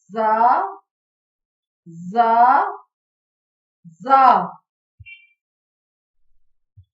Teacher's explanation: زا جب زبان کی نوک اوپر اور نیچے کے اگلے دو دانتوں کے کنارے سے لگے تو زا ادا ہوتا ہے۔ اسے سختی کے ساتھ ادا کیا جاتا ہے۔ سیٹی کی آواز آتی ہے۔